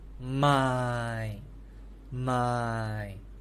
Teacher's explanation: is the same consonants and vowel it's just different tones so mine is low tone it's a v-shape low tone